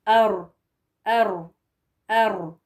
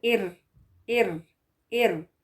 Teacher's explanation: जबान की नोक का ऊपरी हिस्सा ऊपर के दो दांतों के मसूड़ों को लगे तो रॉ अदा होता है खरार के साथ ये नून के मखर से थोड़ा आगे होता · जबान का जो पिछला हिस्सा है जड़ है जबान की उस को ऊपर करके ऊपर उठा के उसको र पढ़ेंगे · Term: मोटा